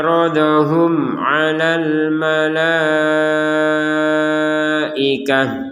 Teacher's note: Mim sukun bertemu ain kita baca dengan jelas. Sebagaimana disebutkan jelas artinya tidak ada samar, tidak ada dengung.